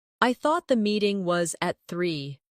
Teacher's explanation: Do you hear the soft connection between meeting and was?